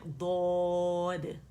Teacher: हाफ़तुल लिसान जो मोटे किनारे हैं ज़बान के, वो हम 5 दाढ़ों को राइट लेफ्ट के लगा रहे हैं।